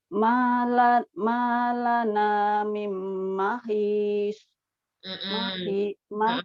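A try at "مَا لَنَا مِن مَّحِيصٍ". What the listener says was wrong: Panjangkan itunya, disisnya panjangkan. Mahis. Masih mahis, masih agak kayak bibir tuh. Mahis. Coba tabrakin ke gigi bawah. His.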